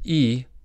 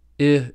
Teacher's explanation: Compared with /i/, /ɪ/ is lower and less frontal.